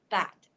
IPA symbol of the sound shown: æ